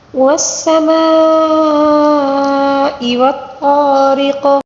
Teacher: والطارق، طا کو پر پڑھیں گے، را کو باریک پڑھیں گے کیونکہ را کے نیچے زیر ہے اور قاف کے نیچے جو زیر ہے وقف کے دوران زیر کو ساکن کے ساتھ تبدیل کر کے پڑھنا ہوگا